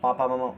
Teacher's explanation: पापा मामा ओष्ठ व्यंजन है